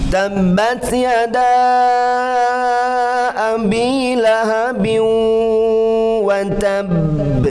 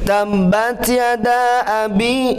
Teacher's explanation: Ya, berarti ada 4 harakat di sana. Kalau biasanya diayunkan, sekarang jangan diayunkan, tapi panjangkan 4 harakat.